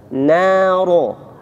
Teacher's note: Nanya tipis, jangan sampai noro, no.